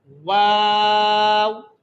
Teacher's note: 14वीं मखरज, दोनों होंठ गोल करने से, दोनों होंठ गोल करने से वहां से एक हरफ अदा होता है। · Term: गोलाई